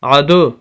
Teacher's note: آواز کو روکا نہیں جائے گا بلکہ آواز کو تھوڑا سا چھوڑا جائے گا، آواز کے اندر گونج پیدا کی جائے گی۔ جیسے ہم کسی کھلے مکان کے اندر ہوں جو بالکل سامان سے خالی ہو، تو اس کے اندر اگر ہم آواز دیں تو آواز گونجتی ہے، اسی طرح یہاں پر ہوگی۔ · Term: قلقلہ